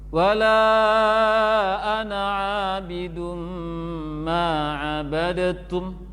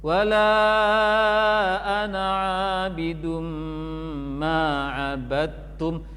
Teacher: Dal hilang 100% karena sudah dimasukkan ke dalam ta sempurna. Karena itu ada tasydid di ta. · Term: idgham